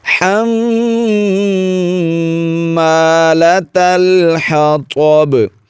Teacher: یہاں پر دیکھیے میم پر شد ہے، غنہ ضرور کریں گے